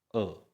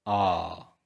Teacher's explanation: छोटी मात्रा मतलब सिर्फ एक मात्रा का समय अ। बड़ी मात्रा मतलब 2 मात्रा का समय आ। दुगना समय लगता है। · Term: दीर्घ अक्षर